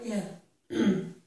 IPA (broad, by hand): ɪ